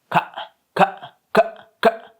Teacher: Es como ka, completamente desde la garganta, de la glotis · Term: glotal